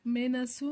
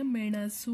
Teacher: ಮೇ ಣ ಸ ಕೊಂಬು ಸು ಮೇನಸು ಅಂತ ಹೇಳಿಲ್ಲ ಮೆಣಸು ಅಂತ ಹೇಳಿದ್ವಿ ಣ ಪ್ರೊನೌನ್ಸ್ ಮಾಡುವಾಗ ನಾಲಿಗೆ ಮಡಚಿ ಹೇಳ್ತಿವಿ